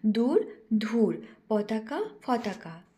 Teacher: যেমন ঝাড়খণ্ডী উপভাষার ধ্বনিতাত্ত্বিক বৈশিষ্ট্য হল অল্পপ্রাণ ধ্বনিকে মহাপ্রাণ উচ্চারণের প্রবণতা দেখা যায়।